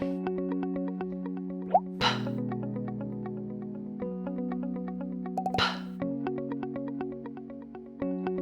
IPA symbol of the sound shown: p